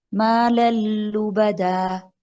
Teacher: ہم تنوین میں جو نون ہے اس کو لام میں ٹوٹل مرج کر رہی ہیں، ادغام کر رہے ہیں، مدغم کر رہے ہیں.